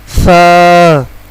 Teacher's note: سا کا آواز زبان کی نوک یعنی زبان کا اگلا حصہ، اگلے حصے کا جو اوپر والے دانتوں کی اندرونی کنارے سے ادا ہوگا